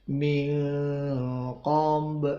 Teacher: nun mati ketemu qaf dibaca ikhfa ma'al gunnah, ini termasuk ab'ad sehingga hampir eng tapi bukan eng, sebelum eng.